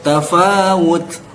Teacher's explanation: Ketika disukunkan, ini terjadi ada udara yang keluar.